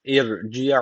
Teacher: ra harfi cezimli öncesi harf alttan bağlandığı için ince okunacak.